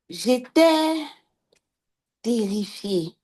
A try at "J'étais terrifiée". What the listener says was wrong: Vous avez respiré. Il faut couper la respiration. Donc, quand je mets, c'est-à-dire, je coupe même avant de dire, j'étais terrifié. J'étais terrifié. Vous allez voir que l'impact n'est pas le même.